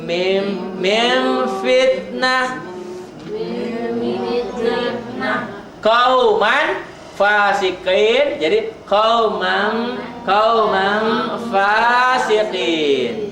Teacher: Bunyi m tapi bibirnya tidak nutup.